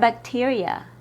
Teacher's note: The I in bacteria has a long E sound, but the E in bacteria has a short I sound.